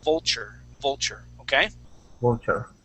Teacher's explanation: that T there is going to sound more like a CH